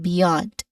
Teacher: Let's start with beyond, which has two syllables in it. We stress here on the second syllable yond, but the first syllable is b, beyond.